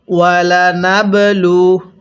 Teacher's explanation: কলকলা করে পড়ব, একটু ধাক্কা দিয়ে পড়ব